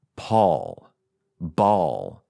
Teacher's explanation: it's a more round shorter reserved kind of vowel